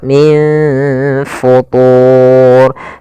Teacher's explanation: cara membacanya disamarkan kembali ke huruf Fanya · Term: ikhfa